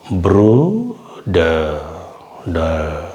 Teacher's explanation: ரொம்ப ஹார்டா உச்சரிக்க கூடாது ப்ரூடர் அப்போ அட்லீஸ்ட் அதையாச்சும் நம்ம முயற்சி பண்ணனும் தொண்டையில அந்த ஆறு வந்து தொண்டையில வரமாதிரி உச்சரிக்கணும்